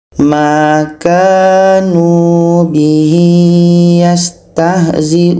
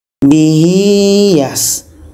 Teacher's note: Ini ya kecilnya bertemu dengan selain hamzah. Ini mat silah qasirah. Kita panjangkan 2 harakat.